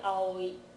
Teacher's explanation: Japanese people don't put gaps between them when they pronounce them, but you can hear all three sounds are there